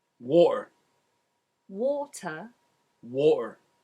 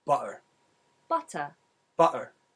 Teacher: when a T is in the middle of a word, mostly when it starts the final syllable, it becomes a glottalized T